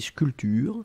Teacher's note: on ne prononce pas le P, on dit sculpture. Mais on doit l'écrire, bien sûr.